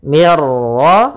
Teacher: Nah, ini namanya juga kita namakan dengan idgham kamil, yang mana nunnya hilang secara secara keseluruhan sehingga langsung masuk ke ra dan tidak boleh ditahan. Mir ra, ra-nya tebal.